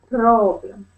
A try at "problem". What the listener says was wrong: Keep focusing on that R sound.